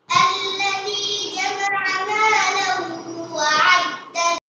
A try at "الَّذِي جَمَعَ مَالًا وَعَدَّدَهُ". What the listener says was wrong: গুণনা করতে হবে, আর একটু গুণনা করো। الذي جمع مالا وعدده